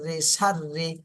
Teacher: র কিন্তু চিকন করে পড়তে হবে র এর নিচে জের চিকন করে